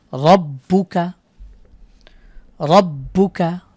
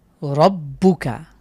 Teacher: আমরা জিভের যে আগা আছে এটাকে আমরা উল্টিয়ে উপরের তালুর সাথে লাগাচ্ছি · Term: মোটা করে পড়ছি